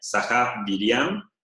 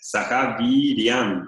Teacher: La I es larga, es decir, que tiene la duración es doble del sonido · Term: vocal larga